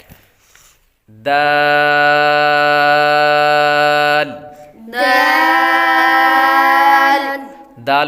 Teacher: دال دال دال حروف نطعیہ میں سے ہے. زبان کی نوک اوپر کے دانتوں کی جڑ سے ادا ہوتے ہیں